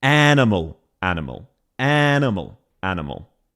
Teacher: She is basically doubling the length of the first syllable.